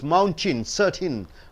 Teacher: t n comes what happens T is straight away jumping through T is held and T jumps on to n